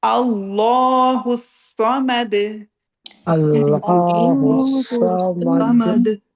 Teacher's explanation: صاد اس میں ہیوی ہے اور اینڈ پہ دال پہ رکیں گے تو کلکلا